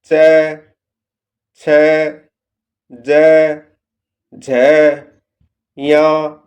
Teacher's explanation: इनका उच्चारण मुख की छत के पिछले हिस्से या तालु से होता है। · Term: तालव